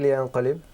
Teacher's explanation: So the nun sakin is with the light nasal sound